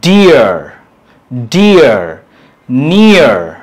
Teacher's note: এটা কিন্তু আও না আবার অ না, এই যে উল্টানো যে ছোট হাতের ই, এটার উচ্চারণটা হচ্ছে আ, আ। তো এই যে ডিফথংটা বড় হাতের আই প্লাস উল্টানো ই